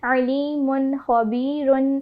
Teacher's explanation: اظہار کا قاعدہ ہو رہا ہے. غنہ نہیں کریں گے بلکہ بالکل ظاہر کر کے واضح کر کے پڑھیں گے نون کے ساؤنڈ کو